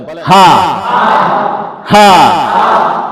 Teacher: এই হাটা হইলো হলকের শুরু থেকে, গলার শুরু থেকে।